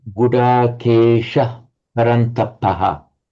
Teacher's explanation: when it's as part of a word group, you don't have the shadow vowel.